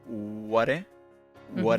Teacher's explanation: the T in what becomes a flap T